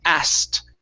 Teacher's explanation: uh the the word asked okay uh is pronounced a-s-s-t okay so we skip over the k sound